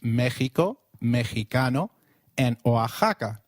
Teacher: it is pronounced as a throaty H in the words Mexico Mexicano and Oaxaca